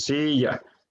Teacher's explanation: la primera sílaba es la tónica en este caso, porque es silla. Entonces suena más fuerte la primera sílaba. Y la segunda, por lo tanto, será la átona. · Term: sílaba tónica